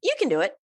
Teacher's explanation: when it's in a sentence in normal speech, it becomes more like can. There's the schwa sound in there.